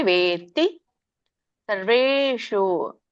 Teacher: ವೇ ದೀರ್ಘ ಇದೆ, ವೇತ್ತಿ ತವತ್ತಿದೆ